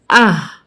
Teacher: اب اس میں دیکھیے یہ آواز ہمارے اسی والی ہا کی آواز ہمارے جیسے ہوا کی طرح آئے گی. یہ ہا حلق سے نکلے گی، یہ ہوا کی طرح آئے گی